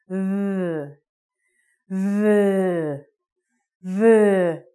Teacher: Like that this time, it is voiced. So like the F sound, same mouth position, but you must vibrate your vocal cords. So it's V, V, V.